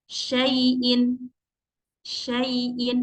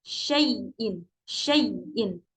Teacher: huruf Lin itu enggak boleh ada tekanan atau nabroh ya jadi dia itu keluarnya sangat lembut